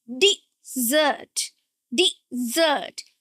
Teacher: And the stress is on the second syllable, dessert.